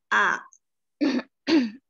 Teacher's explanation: A dari tenggorokan yang paling bawah